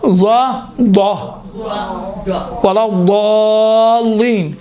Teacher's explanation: ضاد میں دیکھیں 50% دال کی آواز، 50% ضین کی آواز وجود میں آتی ہے